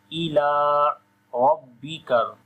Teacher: Ra we read in heavy sound due to fatha sign on it.